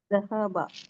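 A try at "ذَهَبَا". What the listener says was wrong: नहीं, बा को लंबा कर, बा बोलो, बा बोलो मेरे साथ, बा, नहीं, खाली तुम बे अलिफ बताओ, बा लंबा करो, बा बोलो।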